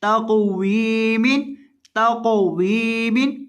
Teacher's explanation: क़ाफ को हिलाकर पढ़ेंगे और मोटा करके पढ़ेंगे